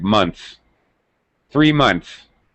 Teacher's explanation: middle consonant sound all right so we get the N THS we get rid of the th sound so it sounds like months